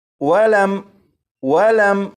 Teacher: یہاں پر دیکھیں، یہ ہے میم ساکن۔ اس میم ساکن میں غنہ نہیں کریں گے اور اسے اس طرح نہیں پڑھیں گے وَلَم وَلَم، بلکہ اسے پڑھیں گے وَلَم وَلَم۔